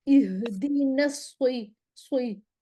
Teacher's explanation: سیٹی کی آواز ہے لیکن موٹی ہے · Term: سواد موٹا